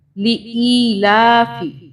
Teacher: حمزہ زیر اور یا، ان دونوں کو تھوڑا سا الف کے برابر اس کو پڑھیں گے کھینچ کر